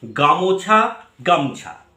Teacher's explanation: শব্দের আদি অক্ষরে শাসাঘাত থাকলে, শাসা ট্রেস দেওয়া যেটা থাকলে শব্দের মধ্যবর্তী কোনো স্বরধ্বনি ক্ষীণ হয়ে ক্রমশ লোপ পেয়ে যায় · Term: মধ্য স্বরলোপ